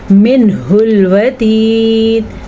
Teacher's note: نون ساکن کے بعد ہا ہے تو یہاں پہ اظہار ہے